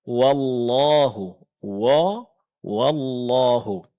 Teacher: menebalkan pengucapan huruf waw ketika dia berdekatan dengan huruf yang tebal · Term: tabkhimuha in jawar harfan mufakhama